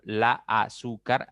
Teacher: En azúcar, la intensidad, la fuerza está en la segunda sílaba.